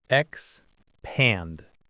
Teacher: Two syllables stress on the second one.